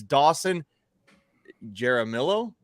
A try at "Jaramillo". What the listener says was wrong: You're not rolling your L's, right?